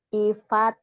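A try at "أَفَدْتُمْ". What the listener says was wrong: I kenapa I? A kan enggak ada I.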